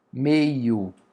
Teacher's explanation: Temos aqui o som do E e do I, mas nós temos o E e o I, vimos agora no nosso mapa mental, que é uma vogal, o E, depois veio uma semivogal. Então não é um ditongo crescente, é um ditongo decrescente, porque a vogal que é mais alta veio primeiro.